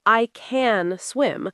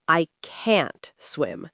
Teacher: Did you hear how can was very soft and quick? It almost disappears. · can is weak and reduced like I can swim, but can't is strong and clear like I can't swim